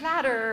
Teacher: What do you hear? Tongue flapping happening there.